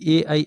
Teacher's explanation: कंठ और तालु के मेल से इसको बोले जाते हैं ए और ऐ को। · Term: कंठ तालु